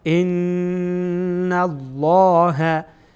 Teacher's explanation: لام جلاله چی خوانده میشه؟ تفخیم میشه، پر خوانده میشه